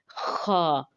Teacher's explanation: खा को पढ़ते हुए होंठों को गोल नहीं करेंगे, बल्कि ज़बान ऊपर की तरफ उठेगी